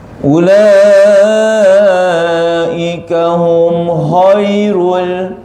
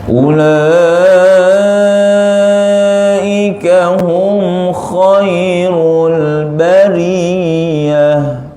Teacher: ada satu lagi sifat yang menyempurnakan huruf kha adalah geseran bunyi khai itu.